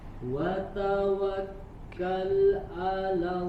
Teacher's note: yang huruf wawnya sempurnakan dhammus syafatain ya, monyongkan kedua bibirnya.